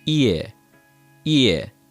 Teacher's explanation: this sounds like a long E in American English followed by a short E right after it. So it sounds like this. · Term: IE